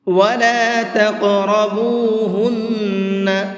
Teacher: قاف کو منہ بھر کے بھی پڑھیں گے اور ساتھ ساتھ اس کے اندر قلقلہ کریں گے۔ قلقلہ کہتے ہیں آواز کو ہلکا سا ڈبل کر کے پڑھنا۔